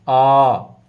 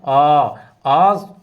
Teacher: आ का उच्चारण यदि हम कर रहे हैं तो मुख हमारा सबसे ज़्यादा खुल रहा है, इसलिए उसे विवृत स्वर माना जाता है।